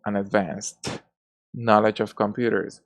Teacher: an S sound, which is a voiceless consonant sound